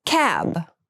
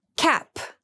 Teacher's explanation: cab has the voiced B sound and cap has the unvoiced P sound